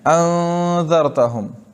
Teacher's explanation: نون نہ تو اپنے مخرج سے ادا ہوگا اور نہ بعد والے حرف کے مخرج سے، بلکہ یہ نون خیشوم میں چپ کے ادا ہوگا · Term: اخفا مغل غنہ